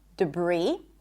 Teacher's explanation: The S is silent in debris,